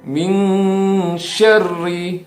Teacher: nun mati ketemu shin itu adalah ikhfa yang harus dibaca samar, kemudian ditahan dan dengan mendengung.